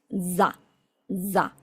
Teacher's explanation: hacemos un zumbido y si nos ponemos la mano en la garganta, nuestra garganta tiene que vibrar